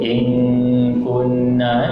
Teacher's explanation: Ikhfa hakiki dekat sini bunyinya ing, I-N-G, ing. Ing, bunyi dekat hidung.